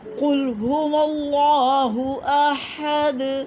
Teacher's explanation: قل میں کاف کو موٹا پڑھیں، یہ حروف مستعلیہ میں سے ہے